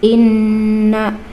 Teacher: ini ada gunah musadadah, nun bertasjid